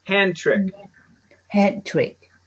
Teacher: We put the D and the T together.